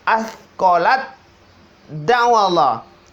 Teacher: Tanya dihilangkan, dileburkan, langsung masuk di dal. Berarti di sini adalah ta ketemu sama dal. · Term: idgham mutajannisain